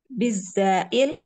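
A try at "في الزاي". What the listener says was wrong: Fizzayil ya fi pakai fa Fizzayil maftuhah ya kita tunjukkan dulu ya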